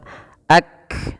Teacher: Syiddah itu artinya tertahannya suara ak. Nah, berhenti kan kayak tertahan suara ak.